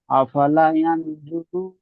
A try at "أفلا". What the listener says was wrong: লাইতে টান দেন, আফালা